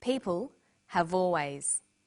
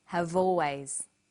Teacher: People have always. Notice how in conversation we link the final consonant sound v with the initial vowel sound or